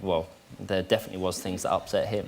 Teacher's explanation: we see the reduction of the TH sound again like we did in Louis Tomlinson's accent and it sounds more like a F sound